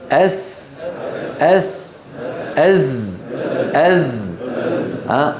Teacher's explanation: منتهى طرف اللسان مع أسفل الصفحة الداخلية للثنايا السفلى، هنا رأس اللسان، فيخرج الصوت من فوقها. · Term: حروف الصفير